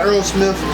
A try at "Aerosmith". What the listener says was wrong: It sound like Earl Smith. It's Aerosmith.